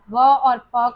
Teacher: व और फ का उच्चारण स्थान है दंत ओष्ठ